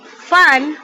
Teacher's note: when we pronounce the word fun, we uses the lower lip and our upper teeth. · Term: labiodental